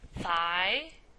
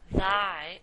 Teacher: So these sounds are produced with the tip of the tongue between the teeth or just behind the teeth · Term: Interdental